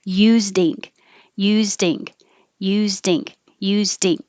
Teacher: the D kind of loses the voicing and it can sound like a t